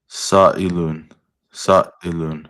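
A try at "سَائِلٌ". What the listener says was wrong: Yep, sa'ilun. Exactly.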